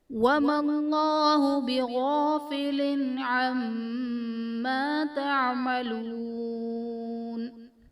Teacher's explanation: وَمَا اللَّهُ میں اسم جلالت اللہ عز و جل کے لام سے پہلے میم پر زبر ہے تو یہاں پر اسم جلالت اللہ عز و جل کے لام کو پر یعنی موٹا پڑھا جائے گا